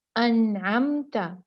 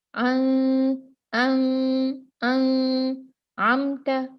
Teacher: جیسے کہ دیکھیں، انعمت، نون ساکن ہے، یہاں پر نون کے بعد عین آیا ہے، تو جب بھی نون ساکن کے بعد حروف میں سے کوئی ایک حرف آ جاتا ہے تو ہم نون کو بالکل صاف پڑھ دیتے ہیں، بتاتے ہیں کہ یہاں پر نون ہے، انعمت، اظہار۔